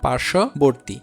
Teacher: ব ফলা থাকার কারণে তালবস্য দুইবারও উচ্চারণ হচ্ছে না, আবার এই ব ফলা উচ্চারণ হচ্ছে না।